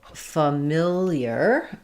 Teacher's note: in familiar, we change to stressing on the mill